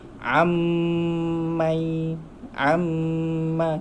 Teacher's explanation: bila nun mati bertemu mim, nampak tak ada sabdu dekat mim tu, kita terus masuk ke sabdu huruf mim. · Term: hukum idgham